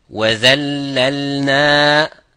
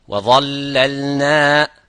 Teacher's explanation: The only thing is difference is empty mouth, full mouth, but the same makhraj